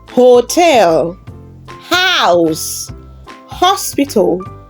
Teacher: The H is alive and kicking. It makes a real consonant sound.